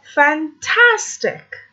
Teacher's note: The stress is in the middle.